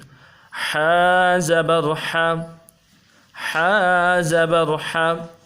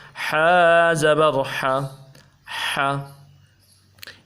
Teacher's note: جو حا ہے یہ حروف حلقی میں سے ہے، گلے کے اندر سے اس حرف کو ادا کریں گے، مضبوطی کے ساتھ جماؤ کے ساتھ اس حرف کو انشاءاللہ العزیز ہم ادا کریں گے۔